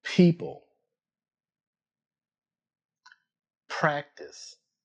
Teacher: Both sounds begin with your lips together. The P sound uses a small puff of air.